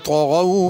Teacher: طغوا میں طا کو بھی پر کر کے پڑھنا ہے، غین کو بھی پر کر کے پڑھنا ہے، تغوا نہیں پڑھنا۔